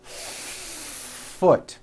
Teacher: You need to hear the air friction. When practicing, try to give the F 1 beat. · Do you see how long I am holding that F? Now I know that's a little bit exaggerated, but you get the idea.